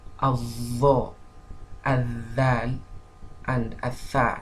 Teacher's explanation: It is pronounced from the tip of the tongue resting against the tip of the upper central incisors. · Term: hurufu al-lathawiyya